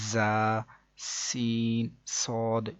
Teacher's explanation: اس کے بعد مزید آگے ہم کو بتایا گیا کہ ان 3 حروف یعنی کہ زا، سین، صاد کو ادا کرتے وقت سیٹی کی طرح کی آواز نکلتی ہے، اس لیے ان حروف کو حروف صفیریہ یعنی سیٹی والے حروف بھی کہتے ہیں، جیسے کہ زا، سین، صاد۔